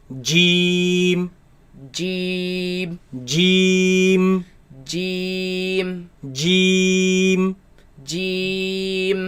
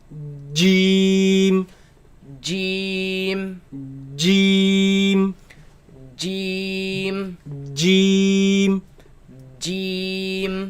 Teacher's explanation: comes from the middle of the tongue against the middle of the upper palate